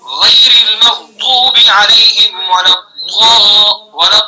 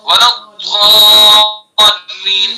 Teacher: تو یہ ہے ضاد کا مخرج، زبان کی کروٹ اور اوپر کی ڈاڑوں کی جڑ